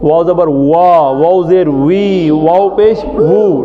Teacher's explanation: होंठों का गीला हिस्सा आपस में जुड़कर खुलता है, और वा दोनों होंठ गोल होकर खुल जाते हैं